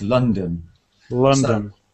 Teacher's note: the second one is a schwa sound · the first vowel is ah like in up because we have an o